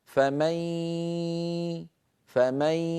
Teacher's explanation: ياء معها غنه ضعيفه لا يصح لابد ان نسوي بين الصوتين ياء من الفم غنه من الخيشوم معا يبدان معا وينتهي معا